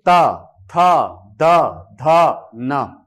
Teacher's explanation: त वर्ग का उच्चारण जब आप करेंगे, त वर्ग का जब आप उच्चारण करेंगे तो आपकी जिह्वा दांत को स्पर्श करेगी। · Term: दंत्य वर्ण